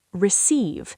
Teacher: Stress the second syllable.